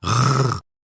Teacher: imaginez que vous faites un petit gargouillis au fond de la gorge, langue légèrement relevée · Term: R guttural